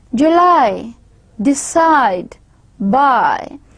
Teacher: there should be a clear presence of gliding from one vowel to another